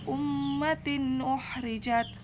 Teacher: izhar sebab huruf tak berharakat kasrah tanwin bertemu huruf hamzah dibaca jelas tidak berdengung sama sekali · gunnah sebab mim bertanda tasdid dan cara membacanya dengan dengung serta ditahan 3 harokat